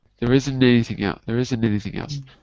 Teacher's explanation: A T is dropped. The T is dropped. So what I'm going to do is move my N to the next word.